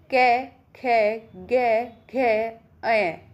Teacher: तो ये जो पांचों वर्ण हैं इनका उच्चारण स्थान भी कंठ से होता है।